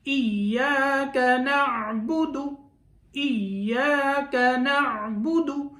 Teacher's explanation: ایاک نعبد، نعبد، یہاں نعبدو نہیں پڑھنا، دال کو لمبا نہیں کرنا، اگر لمبا کر دیا تو آگے واو پیدا ہو جائے گی اور واو یہاں نہیں ہے، ایک حرف زائد ہو جائے گا۔